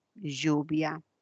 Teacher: Cuál es su definición articulatoria es una lateral es una lateral palatal